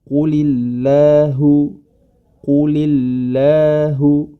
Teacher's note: apabila huruf lam tersebut didahului dengan huruf yang berharakat kasrah maka huruf lamnya menjadi tipis